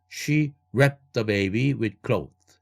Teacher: She wrapped the가 아니라 과거형이 이제 날아가야 되겠네요. the 자음 3개가 겹치니까 경계선 바로 앞에 자음 파열음 wrapped 할 때 t 사운드가 날아가야 되겠죠